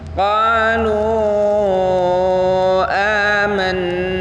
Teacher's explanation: Sebelum na maka kita harus gunnah dulu karena di sana ada nun yang ditasydid.